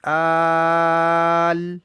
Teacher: اس کے بعد لام ہے اور لام پر جزم ہے، سکون ہے، تو یہ یہاں مد ہوگی، آل، یہ مد لازم ہے۔